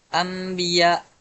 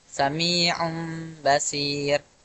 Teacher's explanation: huruf nun sukun tersebut diganti menjadi huruf mim kecil dan dibaca dengan dengung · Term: iqlab